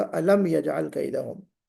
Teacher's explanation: गुन्ना नहीं करना है, इजहार होगा